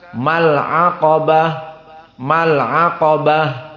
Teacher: Maka ma tidak ada mad tabi'i meskipun alif sakinah sebelumnya fathah. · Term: iltiqa baina as-sakinain